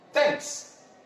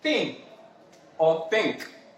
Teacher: you classify this under what is known as a interdental sound you produce this sound by having your tongue come in between